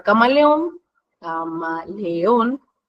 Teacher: en la última sílaba es donde se carga la voz o donde se pronuncia más fuerte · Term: sílaba tónica